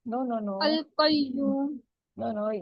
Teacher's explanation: یہ واو ساکن ہے, اس سے پہلے پیش آ رہا ہے تو واو مد ہوگی. 2 کاؤنٹس